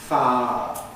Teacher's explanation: smoothing, which means we lose the non-syllabic i bit, and that gives us a two-syllable pronunciation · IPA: [ˈfa.ə]